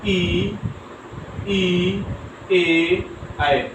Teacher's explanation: जो जिह्वा के अग्रभाग से बोले जाएंगे अग्र स्वर कहलाते हैं